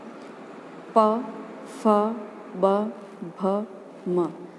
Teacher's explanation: इनमें हमारे होठ एक दूसरे से चिपक रहे हैं